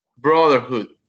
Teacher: And this word has 3 syllables, and the stress in the first one